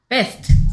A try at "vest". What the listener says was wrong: vest 하나씩 V 그가 아니고 입술을 붙이면 안 돼 입술이 떨어져 있어야 돼 이 상태에서 으 소리 내봐 으 해봐 으 이렇게 한 이렇게 입은 모양 이렇게 만든 다음에 으 해봐